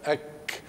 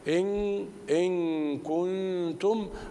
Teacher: ان يفترش اللسان في في قاع الفم وينزل سقف الحنك الاعلى على اقصى اللسان وهو مخرج الكاف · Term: الاخفاء